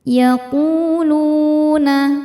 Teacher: Cara bacanya huruf qaf kita panjangkan 2 harokat saja. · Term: mad tabi'i dhahiri